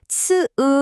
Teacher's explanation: 혀와 이 사이의 좁은 틈으로 공기가 츠으 하고 빠져나가면서 아주 날카로운 소리, 고주파 마찰음이 만들어져요